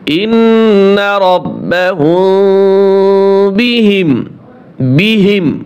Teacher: হুম মিম সেকেন্ডের পরে বা আসছে গুণ হবে